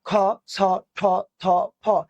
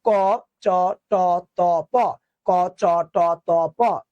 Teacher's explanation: এবার উচ্চারণ করতে বলো খ ছ ঠ থ ফ, তো প্রচুর বাতাস লাগতেছে না? তাহলে কি যে ধ্বনিতে বাতাসের চাপ বেশি তার নাম মহাপ্রাণ, যেটা চাপ কম তার নাম অল্প প্রাণ। তাহলে এগুলোতে বাতাস কম লাগে কচডত প, তাই এগুলো অল্প প্রাণ।